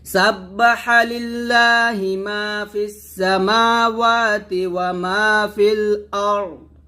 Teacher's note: এখানে র সাকিন মোটা হবে, দদ মোটা হবে একসাথে